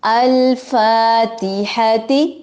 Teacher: ال حمزہ وصلی ہے، اس کو زبر دے کر جوڑیں گے.